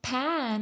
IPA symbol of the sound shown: æ